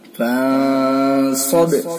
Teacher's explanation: اس کے اندر اخفا کریں گے. نون ساکن ہے اس کے بعد صاد ہے تو اس کے اندر اخفا ہوگا. اخفا حقیقی.